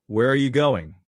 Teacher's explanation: falling intonation, which is actually the most common pattern in American English